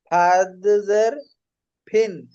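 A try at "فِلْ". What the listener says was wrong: ফিন। তো এই দন্তের জায়গায় এই আপনি এই লটা দেন। লামের লাম জবর কি হয়? লা। তো এই লটা হচ্ছে কি ফা ফা ফা লামজের কি হয় তখন? ফিল। ফিল।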